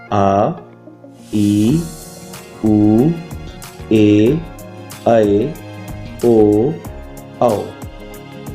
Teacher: इनका जो उच्चारण है वो हरिसव से दुगने समय में होता है, इसलिए ये दीर्घ स्वर कहलाते हैं